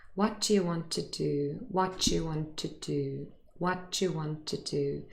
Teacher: The d really changes into a ch and the last t from what disappears. So instead of saying what do you want, it becomes what you want, what you want. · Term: linking